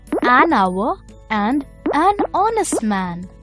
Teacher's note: even though these words begin with a consonant, the letter H is silent. So the words begin with a vowel sound, the vowel sound of O.